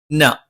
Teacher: നാവിന്റെ അറ്റം അല്ലെങ്കിൽ നാവിന്റെ തല മേലെ മുൻപല്ലിന്റെ മോണയിലാണ്